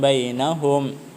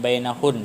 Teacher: Kalau kita berhenti pada hum, maka bunyi mimnya jelas ya. Jangan bainahun ya.